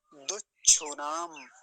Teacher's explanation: दोनों स्थानों पर ह्रस्व उकार हैं, छोटे ऊ की मात्राएं हैं, तो जल्दी ही बोली जाएंगी, लंबा नहीं खींचेंगे। दुच्छुनाम, बीच में चकार है फिर छकार है, चकार आधा छकार पूरा, तो पूरा शब्द क्या बना, दुच्छुनाम, दुच्छुनाम।